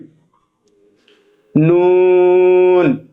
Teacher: জিহ্বার আগা উপরের তালুর সঙ্গে লাগিয়ে উচ্চারিত হয় নুন। এটাতেও কোনো জড়তা নেই, একদম স্বাভাবিক শব্দ নুন।